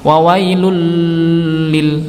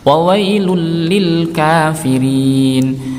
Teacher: Wailulli yang ini ya, dhammatain bertemu lam. Bacaan idgham bila gunnah, dimasukkan ke huruf lam tanpa disertai dengung.